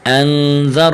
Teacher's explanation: حرف ذال کو نرم اور را کو موٹا